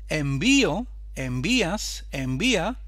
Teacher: here there is a separation when you pronounce them between the letter I and the letter O